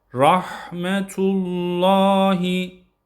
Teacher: Burada lafzatullah'ın lamı kalın okunuyor. Rahmetullahi yine haya dikkat ediyoruz.